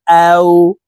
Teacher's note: ওয়াও হরফের উচ্চারণ 2 ঠোঁট গোল করে 2 ঠোঁটের মাঝে ফাঁকা রেখে উচ্চারণ করব। হামজাহ ওয়াও জবর আও।